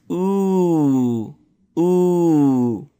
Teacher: it's different because it's twice as long. It's longer than the oo. It's ooh. Ooh. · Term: long vowel